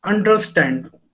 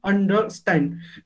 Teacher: we are putting a stress on stand and these two syllables are not stress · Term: a paste